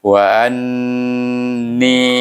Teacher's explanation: Tetapi dia bertemu dengan ditasydidkan dengan huruf nun. Jadi bunyi an. Baik, kena baca dengan gunnah dua harakah. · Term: wajibul gunnah